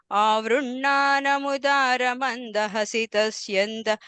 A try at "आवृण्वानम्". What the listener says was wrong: that second line, first word, avrinvanam, va sound, okay? No, just, yeah, in and the va, avrinvanam.